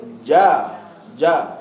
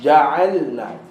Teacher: Jim tak boleh ada angin Jim dan kawan-kawan dia huruf Qalqalah semua tak boleh ada angin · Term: huruf Jim